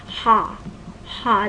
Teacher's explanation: The tongue is lowered, and the back is involved. So ha is a low back vowel.